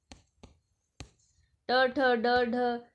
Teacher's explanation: ट ठ ड ढ यह मूर्धन्य ध्वनियां है